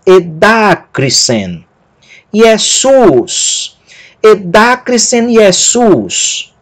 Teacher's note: A primeira palavra, o acento dela é na sílaba da e a segunda na sílaba sus.